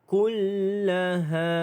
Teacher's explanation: Ha dibaca dengan panjang 2 harakat kerana mad asli huruf alif.